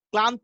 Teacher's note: ক এবং ল এর মধ্যে অ থাকবে না, তখন এটা হচ্ছে কি যুক্ত হয়ে গেছে। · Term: যুক্ত ব্যঞ্জন